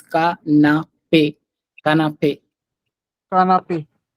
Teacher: ca- uh, See, after campagne. n, if there is a vowel, you don't have to pronounce it as a nasal sound. You have to pronounce the n.